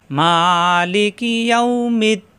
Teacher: মা একালিপ টান, ইয়াউমিদ্দিন তিন আলিপ টান